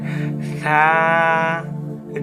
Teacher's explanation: জিহ্বার আগা উপরের দাঁতের ধার ঘেঁষে পাতলা করে